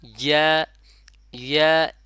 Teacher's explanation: জিহ্বার মধ্যখান উপরের তালুর সাথে লাগাইয়া। তাহলে জিহ্বার মধ্যখান লাগে যাবে এবং উপরে যে তালু আছে তালুর সাথে লাগাইয়া একসাথে বলবে ইয়া, ইয়া, এবং এক আলিফ পরিমাণ টানবো।